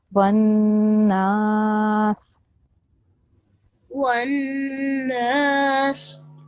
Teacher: You join the vowel with the noon.